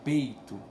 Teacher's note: Por exemplo, peito, então o I é a semivogal, ela tem um som um pouquinho mais fraco e sai ali agarrada com a vogal principal